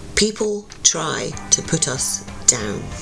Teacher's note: Those word beginnings, p, t, p, d, are all plosive sounds. They add literal percussion to the vocals, making the language itself sound aggressive, rhythmic, alive.